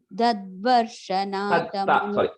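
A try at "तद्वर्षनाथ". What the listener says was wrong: Sorry. Tadvarsha, ta, first ta.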